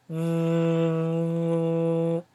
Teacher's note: the sound vibrates you're not just blowing the air you are holding it there and you're making it vibrate